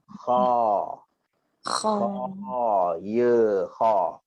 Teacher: ada dua huruf yang keluar daripada hujung kerongkong, iaitu huruf ghain dan kha